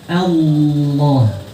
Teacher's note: Kita mengucapkan seperti Allah ditambah naikkan bagian belakang lidah, jadi Allah. Tidak boleh ada huruf waw nyempil di situ. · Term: tafkhim